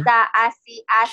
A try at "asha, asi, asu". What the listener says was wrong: Shin. Asha asi asu. Yang sebelumnya tadi shin-nya kurang nyut ya. Asha, asi,